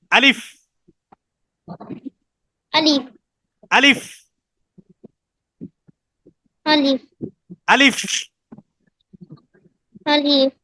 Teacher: আলিফ উচ্চারিত হয় মুখের খালি জায়গা হইতে